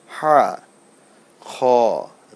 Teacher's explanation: হা এটা অনেক ভিতর থেকে আসছে গলার মাঝখান থেকে